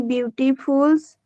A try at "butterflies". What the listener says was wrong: Butterflies. Butterfly. Read the spelling. Read out the spelling. Wait, before that, just read out the spelling. Butterflies. Spelling. Read out the spelling. Butterflies. Read out the spelling. So it's butterflies. Okay, not beautiful. So the same mistake we are having. Our brain got the signal that it's not butterflies but beautiful.